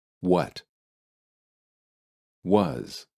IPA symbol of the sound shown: ə